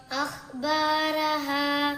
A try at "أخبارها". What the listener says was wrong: പിന്നെ അതുപോലെ അഖ്ബാറഹ ഇവിടെ ഹ ആണ്, അതൊന്ന് കറക്റ്റാക്കി ഉച്ചരിക്കണം.